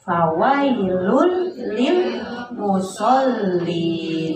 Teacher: Jadi itu idgham bila guna. Jadi tidak boleh didengung. Tidak boleh fawailul lil.